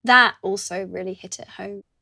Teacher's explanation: is speaking slowly and lingers on the word that.